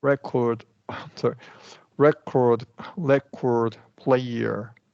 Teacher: record is functioning as a noun. So this is a schwa R.